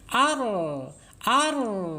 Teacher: lidah kita ditarik lidah kitatika ketika e mengucapkan Ar awalnya begitu Ar tarik karena punya sifat inhirab ditarik ke dalam · tidak sempurna mengalir tidak sempurna ketika diucapkan dan inhiraf takrir ya takrir bergetar tetapi tidak boleh bergetar melebih dari tiga getaran